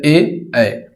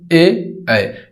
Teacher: कंठ और तालु से मिला के बोला जाता है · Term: कंठ एवं तालव्य